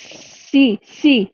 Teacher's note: سین کو بھی سختی سے ادا کریں گے ہم سیٹی کی آواز کے ساتھ۔